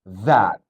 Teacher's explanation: Jadi bukan that ya. Jadi bukan suara D, tapi suara that. Jadi ditiup.